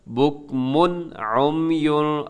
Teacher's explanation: غنہ نہیں کرتے، آواز کو ناک میں نہیں ٹھہراتے بلکہ تیزی سے یہاں سے گزر جائیں گے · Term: اظہار